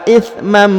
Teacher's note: huruf Man harakat an bertemu dengan huruf mim berharakat tasdid maka ditahan dan ditekan didengungkan dua harakat